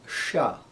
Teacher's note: This is different than English. This is actually cerebral. You touch the tongue up to the palate, the front of the hard palate